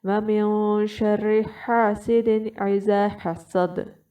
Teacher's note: جو حلق کا دوسرا حصہ ہے آپ نے وہاں سے ہا نکالنا ہے